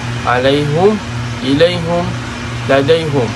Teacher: Imam Hamzah akan dhammahkan dalam tiga perkataan ini, tiga kalimah, iaitu alaihim ilaihim waladaihim. Dhammah, apabila kita dhammahkan, contohnya alaihum ilaihum ladaihum.